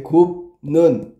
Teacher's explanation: 비읍이 니은 때문에, 니은. 얘의 영향을 받아서 미음으로 바뀐 거야. · 비읍이 안 울림 소리인데 울림 소리가 된 거예요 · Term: 비음화